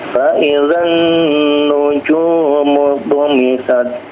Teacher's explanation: nun yang bertasydid silahkan agak ditahan